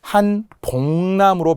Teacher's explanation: 만약 한복남이라는 사람 이름이라면 발음은 한복남으로 비음화가 되겠죠